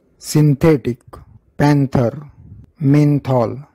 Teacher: सांगतो त्यातल्या एन चा उच्चार नीट ऑब्जर्व करा सिंथेटिक पॅंथर मेंथॉल या शब्दांमध्ये एन चा उच्चार नच होतोय कारण पुढे थ आहे · या शब्दांमध्ये एनचा उच्चार नच होतोय कारण पुढे थ आहे. त थ द ध न थचा परस्वर्ण न.